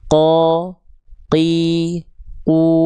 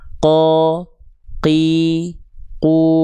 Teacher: huruf qof itu dia nempel seluruh pangkal lidahnya nempel ke langit-langit yang paling belakang aja. Nah, ini disebut dengan langit-langit lunak sehingga pada praktiknya qof itu dia enggak keluar nafas, enggak mengeluarkan percikan nafas. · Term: huruf qaf